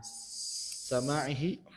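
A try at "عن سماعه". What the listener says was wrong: Ya, sima'ihi. Bukan sama ya, sima' gitu. Sima'ihi.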